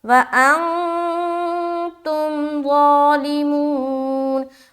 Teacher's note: وَأَن میں اخفا، تم میں تا کو میم سے ملا دیا. ظالمون، ظا کو منہ بھر کر بولنا ہے اور کھڑا زبر بھی ہے تو لمبا کریں گے.